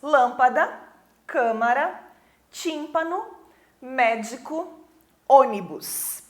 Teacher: são as palavras que tem a antepenúltima sílaba tônica Ou seja a terceira sílaba de trás para frente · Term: proparoxítonas